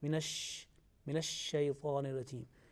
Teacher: the quality of sheen is to spread